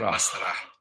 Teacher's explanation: breathy H on the end there